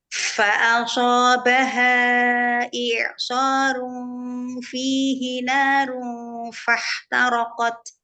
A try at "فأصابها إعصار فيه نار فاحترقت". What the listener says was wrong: Ya, angkat lagi pangkal lidah, suaranya naikin lagi ke langit-langit mulut. Fa'asobaha i'sarun fihi narun fahtaraqat.